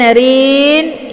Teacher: ra ini dibaca tipis karena ra berharakat kisrah, yaitu bacaan tarqi. Jadi enggak boleh terangkat ee pangkal lidahnya ke langit.